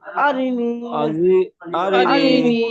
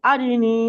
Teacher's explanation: নুন ইয়া জেরনি তাহলে কেমন হবে আরিনি আরিনি >> আরিনি আরিনি রিটান হবে না আ টান হবে না রিটান হবে না শুধু নুন টান হবে